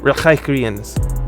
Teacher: the glottal non-velar fricative sound that you hear in this word, in the back of the throat